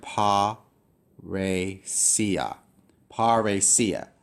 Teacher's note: This is not a diphthong. So you have to pronounce them separately.